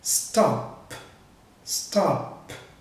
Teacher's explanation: a sua corda vocal não vibra quando você pronuncia o P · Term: desvozeado